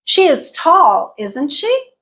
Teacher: that last part is the tag that is where our Rising pitch is happening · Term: Tag questions